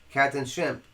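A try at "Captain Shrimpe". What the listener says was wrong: That's Captain Shrimp with an E. Or Shrimpay.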